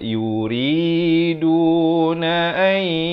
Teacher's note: Asalnya an, tapi bila datang ya masuk beserta dengung jadi ai dengan kadar 2 harakat. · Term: idgham bi gunnah